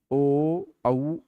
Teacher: ओष्ठ और कंठ दोनों का प्रयोग है।